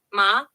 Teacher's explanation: neutral tone light tone Soft short and unstressed almost like a quick add-on